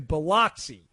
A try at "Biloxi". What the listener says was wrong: Well, it's more of a U sound, but you got close enough.